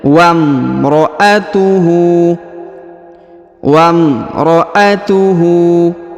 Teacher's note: huruf wau langsung masuk sambung ke huruf mim tanpa membaca huruf alifnya